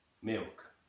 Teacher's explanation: completely dropping the consonant and just dropping the L there entirely